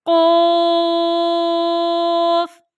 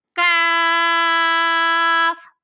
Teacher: یہ دو نقطوں والا قوف جو ہے یہ ہمارے پاس موٹا ہے، ان میں 5 الف کے برابر مد ہوتا ہے، اور کاف جو ہے یہ ہمارے پاس باریک ہے اور اس میں بھی ہمارے پاس 5 الف کے برابر مد ہوتا ہے، اور ان دونوں کے مخارج یعنی قاعدے ادائیگی کی جگہ جو ہے وہ الگ الگ ہے۔